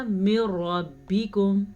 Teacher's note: دیکھا ہم نے نہ نون پڑھا یہاں پہ اور نہ ہی غنہ کیا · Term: ادغام بلا غنہ